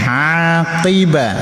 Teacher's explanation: qi juga huruf pangkal lidah ya, jangan ki.